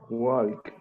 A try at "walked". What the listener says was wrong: sin la L. Como si esa L no existiera.